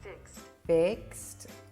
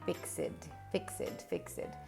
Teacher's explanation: try to say IKST instead of IKSI